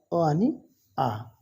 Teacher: अ आणि आ तर हे कंठ वर्ण कंठाद्वारे याचं उच्चारण होणं